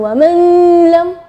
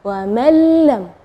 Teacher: Ya, di situ kita bacanya wa mallam ya, jadi huruf nunnya tidak ada, atau kita dibilang idgham ke huruf berikutnya dan gunnahnya tidak ada, wa mallam ya. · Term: idgham bila gunnah